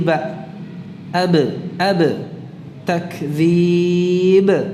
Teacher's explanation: huruf qalqalah ini selain tertahan suara, tertahan pula nafasnya